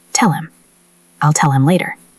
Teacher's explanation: The word him is just grammar. So, we connect the L from tell directly to the M of him. It sounds like tell him. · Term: drop the H sound